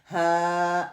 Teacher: हा के लिए वो वाइब्रेशन आप करके देखें, हा, वो वाइब्रेशन वहाँ पे आपको फील हो रही है. जो वोकल कॉर्ड है ना, वहाँ पे आपको वाइब्रेशन फील होनी चाहिए